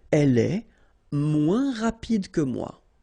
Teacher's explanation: And then, moins, same thing here. Remember, we don't pronounce the final S.